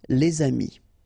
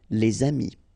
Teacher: If you've got a word after and then it's starting with a vowel like this one, amis, friends, then you should make the liaison